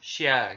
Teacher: dalam bahasa Indonesia itu SY gitu itu gampangnya Tapi secara teori huruf sini dikeluarkan dengan cara mengangkat Tengah lidah ke langit-langit